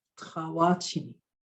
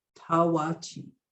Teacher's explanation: So notice I kind of gave it a guttural T. I didn't say Tawachi.